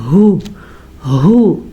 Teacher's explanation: तो आपने इसको पढ़ना है हु, हु, अल्लाह हु जैसे होता है ना ये वही हु है। सीने से आवाज़ निकलती है हलक के आखिरी हिस्से से